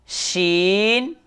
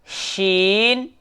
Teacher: इस शीन को सीटी के साथ पढ़ेंगे।